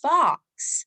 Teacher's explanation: our short o says ah with me like in the word fox